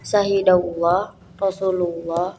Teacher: perkataan Allah didahului oleh fathah atau dhomah maka haruslah dibaca dengan tebal